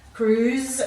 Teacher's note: Now here you're changing, S is changing its sound from its worse to a Z sound. Cruise, you're getting the Z sound again with the SE